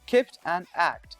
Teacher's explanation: the closure of the speech organs for the second consonant is made whilst the closure for the first consonant is still in position · there is only one explosion for the two stops; the first stop is incomplete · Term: Stop + Stop